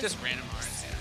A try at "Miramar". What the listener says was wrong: Miramar. Do the last R, too. Do both R's.